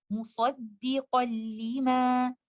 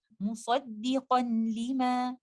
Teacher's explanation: this idgham is the complete merging of letter noon sakina, and that's why you will not hear any sound of letter noon. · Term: idgham kamil